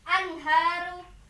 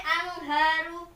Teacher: Jadi kalau baca hukum izhar itu tidak boleh didengung atau tidak boleh dipantulkan.